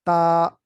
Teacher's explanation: جو زبان کی نوک ہے وہ اوپر والے دو دانت ان کی جڑ کے ساتھ جب ملتی ہے تو تا کی آواز آتی ہے